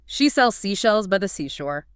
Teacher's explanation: And what makes that one so brutal is that constant split-second switch going between the soft S and the slightly slushier SH. Your brain's got to manage airflow and voicing because seashells has that Z sound hidden in it. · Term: sibilance